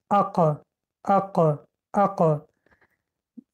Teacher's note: قفای زبان ما به پشت کام می رسد. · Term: حرف قا